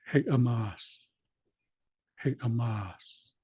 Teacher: So the accent is on the last syllable.